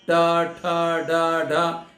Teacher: फिर कहते हैं री टू रसाणा मूर्धा, री टा ठा डा ढा, ये कैसी जीभ ऊपर जाके फटाक से टकरा टकरा के वापस आती है